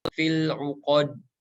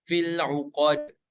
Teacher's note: Fil uqad dan huruf dal yang berharokat sukun memiliki sifat qalqalah atau memantul